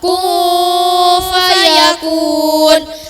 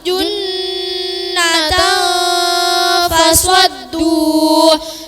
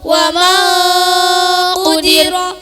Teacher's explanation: suara samar dan dengunnya terdengar NG